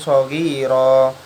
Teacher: Fathah tanwinnya tuh dibaca wakof karena juga setelahnya itu ada hamzah wasol. Jadi cara bacanya ro bukan ron, dia dikenai hukum bacaan mat iwat.